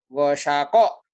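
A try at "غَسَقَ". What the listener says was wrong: Nggak ada yang panjang.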